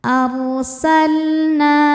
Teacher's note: Inna ro sukun dibaca secara tafkhim karena didahului fathah, maka ro-nya tebal.